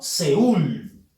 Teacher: Sabemos que es una ciudad. La fuerza de voz es en ul, que es la última sílaba.